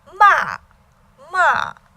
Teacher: top find you but towards the top so MA and then fourth tone starts the top then Falls sharp and strong to the bottom